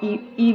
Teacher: मुह भी हमारा अवता आकार होता है गोल नहीं होता है संवृत का मतलब यह है कि कम खुलता है पूरा मुह तो खुलता ही नहीं है जब हम ई बोलते हैं